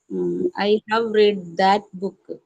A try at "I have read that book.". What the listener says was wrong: ഒരു കാര്യം അവിടെ ശ്രദ്ധിക്കണം, READ തന്നെയാണ് എഴുതുക. പക്ഷേ പാസ്റ്റ് പാർട്ടിസിപ്പിൾ ആണെങ്കിൽ റീഡ് എന്ന് പറയരുത്, റെഡ് എന്ന് പറയണം. റീഡ് present tense, past tense റെഡ് ആണ്. സ്പെല്ലിംഗ് അത് തന്നെയാണ്. Yes, I റീഡ് every day, I റെഡ് yesterday. കേട്ടോ, അപ്പൊ റീഡിന് സ്പെല്ലിംഗ് പക്ഷെ റെഡ് എന്ന് പറയണം.